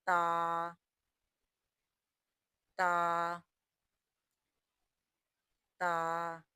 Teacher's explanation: تا وہ حرف جو تالو کے اگلے حصے سے نکلے